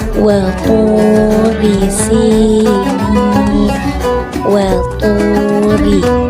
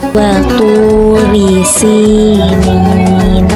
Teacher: Lebih tepatnya, ketika ro tafkhim pangkal lidah terangkat, sedangkan ketika ro tarqiq pangkal lidah tidak terangkat atau datar